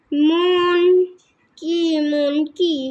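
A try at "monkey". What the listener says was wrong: अब मॉन्की नहीं बोलते, हम क्या बोलते हैं? मंकी। हाँ, मंकी।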